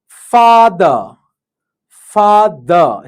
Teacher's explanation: lips relaxed and unrounded, jaw open wide, tongue low and back, make a long and steady ah sound.